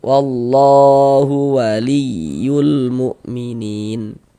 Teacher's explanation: Maka berarti lafaz Allahnya huruf lam jalalahnya dibaca tebal, baca tabkhim. Di sini yang kita temui harokat fathah nih, tebalkan lafaz Allahnya.